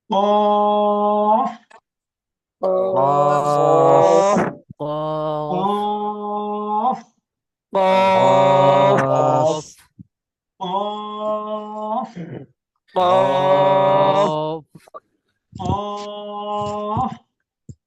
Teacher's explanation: জিহ্বার গোড়া তার বরাবর উপরে তালুর সঙ্গে লাগাইয়া ডাল কাকের মতো মোটা আওয়াজে